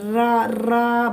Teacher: जब जीभ ऊपर की ओर जाती है, रा रा बोलेंगे तो ध्वनि जो है लुढ़कती हुई सी दिखाई पड़ती है और जीभ में कंपन होता है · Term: लुंठित व्यंजन